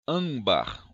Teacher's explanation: Olha só, nas palavras âmbar, observe que o M está depois do A. Então, ele vai fazer um som de ã sobre esse A aqui. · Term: ressonasal